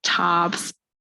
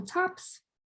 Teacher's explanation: this is low back raising this is the process by which speakers will variably raise the low back a up to open o